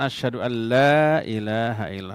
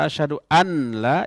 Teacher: idgham itu memasukkan ya tapi tanpa dengung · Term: idgham bilagunnah